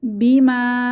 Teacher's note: বি মাতে এক আলিফ টেনে পড়বো আলিফ মাদ